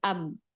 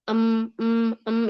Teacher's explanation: Kalau mim dia itu enggak semuanya 100% suara itu ke bibir, ada yang ke hidung